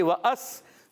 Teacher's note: حمزہ کو سین سے ملائیں، سین کو باریک پڑھنا ہے